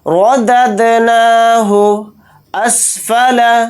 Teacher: را کو موٹا پڑھیں گے کیونکہ را کے اوپر زبر ہے۔ دال کو دال ساکن کے اندر ملا دیں گے اور دال کے اوپر جزم ہے تو دال کے اندر قلقلہ بھی کریں گے۔